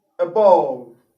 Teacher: a there is not the short ah sound rather it is the schwa sound